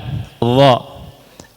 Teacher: sebagiannya mengucapkan huruf dha, ujung lidah nempel di gigi depan